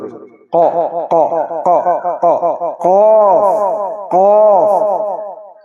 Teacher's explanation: কফ, কফের উচ্চারণ হলো ক ক, গলার ভিতরে একটা ছোট্ট একটা জিহ্বার মতো আছে, ওই জিহ্বার গোড়ার থেকে উচ্চারণ হবে